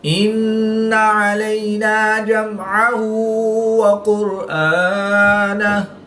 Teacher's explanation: یا ساکن سے پہلے لام پر زبر ہے تو یا لین اس کو لمبا نہیں کریں گے · میم ساکن کے بعد حرف با اور میم کے علاوہ حرف عین ہے تو یہاں پر میم ساکن میں اظہار شفوی ہوگا، یعنی غنہ نہیں کریں گے